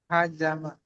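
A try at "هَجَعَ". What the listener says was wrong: haja'a. Ain.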